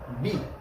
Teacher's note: माझ्या लिप्स इथे काहीतरी फ्रिक्शन झालं, थोडंफार घर्षण झालं